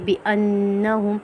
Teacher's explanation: نون مشدد حالت میں ہے تو نون پہ ہم غنہ کریں گے